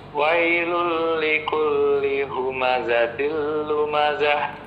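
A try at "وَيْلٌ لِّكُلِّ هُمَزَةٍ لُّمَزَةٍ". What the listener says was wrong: za-nya coba lebih jelas. Za. Nah, tapi zahnya yang terakhir itu ha besar. Wailul likulli humazatil lumazah.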